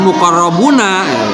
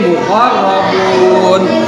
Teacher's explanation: ketika dibaca dan berada di ujung ayat, maka harokat itu hilang sehingga menjadi sukun.